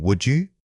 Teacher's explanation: Notice how the D in would often reduces or links with the following vowel. Instead of saying would you, your breath should guide it smoothly from one syllable to the next.